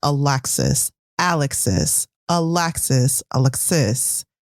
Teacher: i'm not saying one syllable louder than the other but that emphasis is clearly on the first syllable of alexis